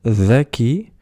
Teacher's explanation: Elle se prononce comme le D, mais un petit peu en zozotant.